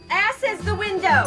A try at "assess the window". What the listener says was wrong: It's assess the window, not ass is the window. You put the wrong emphasis on the wrong syllable.